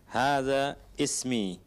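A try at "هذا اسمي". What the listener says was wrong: Hadasmi. Kenapa kita tidak baca alifnya? Ada apa dengan hamzanya itu? Kenapa tidak kita baca? Hamzatul wasl. Ditulis tapi tidak dibaca ketika di tengah. Ketika di tengah.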